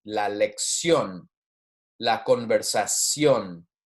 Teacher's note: the emphasis is on the last syllable because we have an accent there same thing there we have an accent breaking up the diphthong